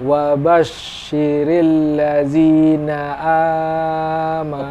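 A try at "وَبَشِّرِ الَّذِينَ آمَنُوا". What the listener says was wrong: Kepanjangan. Dua ketukan di ayun. Amanu. Amanu.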